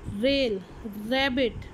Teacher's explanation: टंग टिप जो है वो रिवर्स होती है, रेट्रोफ्लेक्स होती है towards the roof of the mouth